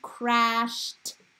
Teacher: We know that it's going to be the t sound because it is unvoiced.